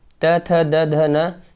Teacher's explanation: दंत से होता है आपका त वर्ग